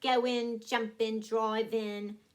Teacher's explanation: ING is in, like go in, jump in, drive in, just cut off the G.